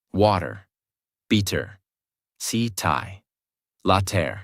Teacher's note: In these words, the mouth does not stop strongly on the tea. The tongue touches quickly and moves on. That is why it sounds softer.